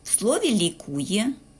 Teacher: в слові лікує Ми чуємо звукосполучення й е в кінці слова